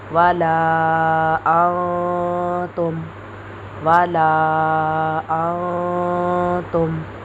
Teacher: تو ادھر ہم نون ساکن کی آواز کو چھپا کر پڑھیں گے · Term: حروف اخفا